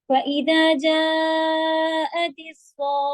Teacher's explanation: جا کا مد 4 یا 5 حرکت، لیکن صوخہ 6 حرکت. تو دونوں مد ایک ساتھ ہیں.